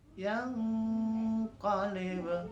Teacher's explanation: pada kata yang qalib itu ikhfa-nya diangkat suaranya